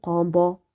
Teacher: noun est caché sur le qaf, c'est emphatique